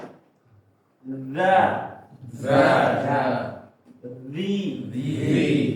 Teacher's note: jadi lidah keluar sedikit dan dia seperti digigit ya. Dza dikeluarkan sedikit lidahnya habis itu seperti tergigit.